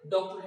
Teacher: हिंदी में आ और ओ के बीच की ध्वनि है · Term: आगत ध्वनि